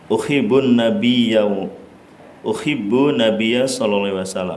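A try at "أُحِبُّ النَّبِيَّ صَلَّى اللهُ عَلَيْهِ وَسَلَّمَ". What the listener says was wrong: Enggak pakai tanwin.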